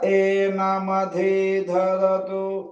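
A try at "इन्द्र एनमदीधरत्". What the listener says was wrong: మధీ ఒత్తులేదండి. ఇంద్ర ఏనమదీధరతు. మదీధరతు అన్ని స్వరితమే. ఇంద్ర ఏనమదీధరతు.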